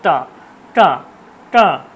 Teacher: দেখুন জিভটা ভাঁজ হয়ে ঠিক উপরের দিকে চলে যাচ্ছে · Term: মূর্ধা